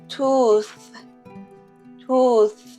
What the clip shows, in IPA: tuːθ